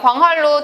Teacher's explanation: 리을이 앞에 있는 니은한테 영향을 줘서 리을로 만들어 버리죠. 자, 그래서 유음화가 일어났습니다.